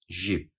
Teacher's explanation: the acronym tends to be pronounced ji with the voiced postal violer fricative J as in the J in